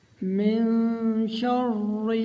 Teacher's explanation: پہلی دفعہ شین کو را کے ساتھ ملائیں گے تو را موٹی پڑھی جائے گی۔ دوسری دفعہ جو کسرہ ہے اس میں را کو باریک پڑھا جائے گا۔